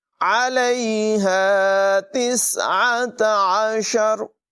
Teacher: حلق کے درمیان والے حصے سے عین کو نکالتے ہیں. ہا حلق کے نچلے حصے سے پڑھا جائے گا